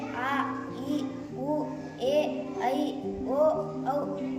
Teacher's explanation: 2 ಮಾತ್ರಾ ಕಾಲದಲ್ಲಿ ಉಚ್ಚರಿಸಲ್ಪಡುವ ಅಕ್ಷರಗಳಿಗೆ ದೀರ್ಘಸ್ವರಗಳು ಎಂದು ಕರೆಯುವರು